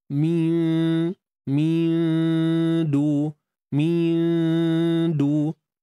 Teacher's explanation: Ya, sembunyikan nun di sisi huruf dal. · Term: ikhfa